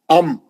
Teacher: है सिर्फ होठ सिर्फ होठ अम दोनों होठों का दोनों को दोनों होठों का सख्ती से मिल जाना वही उसका मखरज है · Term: मीम